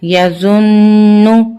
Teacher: नून मुशद्दद है और रूल के मुताबिक हमने यहां पर कुन्ना करना है